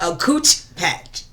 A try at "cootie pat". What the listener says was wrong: You see, you said patch. Cooch pat.